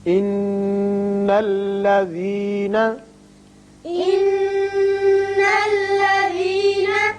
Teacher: نون مشدد حرف غنہ ہے یہاں غنہ کریں گے.